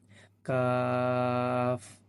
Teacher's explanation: জিহ্বার গোড়া হইতে একটু আগে বাড়াইয়া তার বরাবর উপরে তালুর সঙ্গে লাগাইয়া একটি হরফ উচ্চারিত হয়, কি, কাফ। অর্থাৎ জিহ্বার গোড়া থেকে একটু আগে বাড়াই দিব, কাফ।